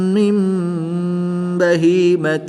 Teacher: نون ساکن کو میم سے بدل کر غنہ زمانی کر کے پڑھیں گے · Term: اقلاب